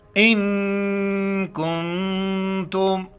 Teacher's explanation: خیر لکم خیر لکم ان کنتم دونوں جگہیں پر ناک میں آواز پیدا کرنے، اخفا کر کے ناک میں آواز پیدا کرنا ہے.